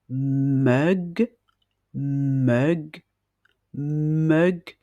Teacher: Pour cela, il faut placer votre main sur votre gorge lorsque vous prononcez le son m, et vous allez sentir des vibrations au niveau de vos cordes vocales